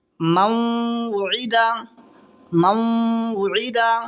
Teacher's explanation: نون ساکن کے بعد میں واو آ رہا ہے، یہاں ملا کر کے گنہ کے ساتھ پڑھیں گے ، اس کو ادغام ناقص بھی کہتے ہیں۔ اب آگے میم